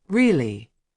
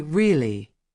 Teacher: When someone says really with a high tone, it means they are surprised. When they say really with a low tone, it means they already knew.